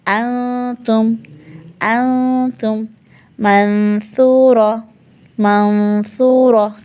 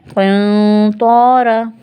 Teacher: قنطارا، خود بخود، کیونکہ طا کے مخرج پہ زبان چلی گئی، یہاں ثا کے مخرج پہ چلی گئی، جب ثا کے مخرج پہ گئی تو غنہ خود بخود باریک ہوا، جب طا کے مخرج پہ گئی تو غنہ خود بخود بھاری ہو گیا